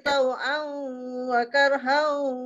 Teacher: tanwin bertemu dengan waw, dia idgham al-gunnah. Jadi kita buat ma'al-gunnah.